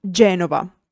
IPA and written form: ˈʤɛnova (Genova)